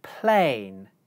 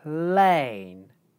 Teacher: the aspiration from the /p/ consonant carries over into the /l/ consonant.